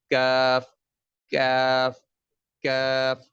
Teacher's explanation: جہاں پہ تالو گول ہونے کے بعد پھر سیدھا ہونے لگتا ہے نا, اس جگہ سے کاف کی ادائیگی کرنی ہے